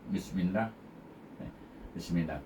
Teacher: Bismillah pada kalimah Allah tu munyinya nipis.